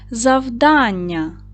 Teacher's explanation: Завдання наголос на другий склад на а.